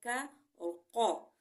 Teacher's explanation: ان دونوں کا ایک مخرج ہے، یعنی کہ حلق زبان کی جڑ تالو کی جڑ سے لگے تو کا اور قو ادا ہوں گے